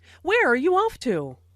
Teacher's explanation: Notice the falling intonation since this is an information question, not a yes-no question.